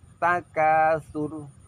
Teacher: Ro di sini dibaca tebal karena ro tersebut berada setelah huruf berharokat dhammah